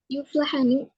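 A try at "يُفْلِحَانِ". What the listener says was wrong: Terus yuflihani, bukan yuflahani, yuflihani.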